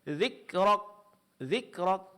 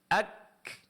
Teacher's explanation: suara tertahan kemudian disertai berikutnya dengan keluarnya sedikit angin atau napas ya. Ah berlebihan di dalam mempraktikkan sifat syiddah yaitu suara yang tertahan menyebabkan terjadinya hilangnya sifat haas kebalikan dari yang pertama. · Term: sifat hamas